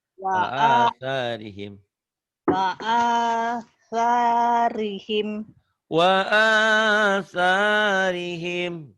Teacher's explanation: Sa-nya ujung lidah ya. Sa ujung lidah.